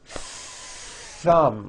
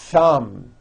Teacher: Notice how long I'm holding the TH sound.